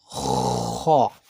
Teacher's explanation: খ তালুর সাথে ঘষা খাবে